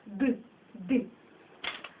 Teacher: далі іде літера д Вона завжди вимовляється твердо